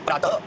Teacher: विसर्ग जो होते हैं ये कंठ से उच्चरित होते हैं।